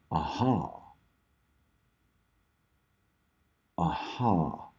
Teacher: I'm gonna call it a voiceless laryngeal near fricative aspirate · so H cannot be an approximate because there's definitely friction